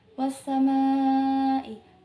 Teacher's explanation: Was-samai, ma'i itu hukumnya adalah mat wajib mutasil. Ma'i adalah hukumnya mat wajib mutasil, yang dibaca itu 5 harokat.